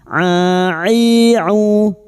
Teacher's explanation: huruf ain wastul halqi, yaitu tengah tenggorokan